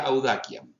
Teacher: la C se pronuncia como oclusiva, no como nosotros estamos acostumbrados a pronunciarla de forma fricativa